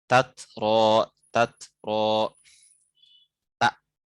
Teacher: Seperti tatro, tatro, tak. Nah, memang ada dua tak, tapi yang pertama berharokat, yang kedua sukun. Tidak bisa diidgham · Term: izhar